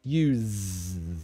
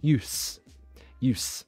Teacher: same almost same pronunciation but the difference is the voiced use an unvoiced use that's the only difference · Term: voiced z